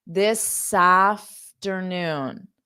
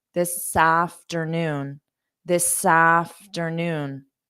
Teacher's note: because we have S and then a vowel sound you can say this sa so sa this afternoon so you can't just stop there of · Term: linking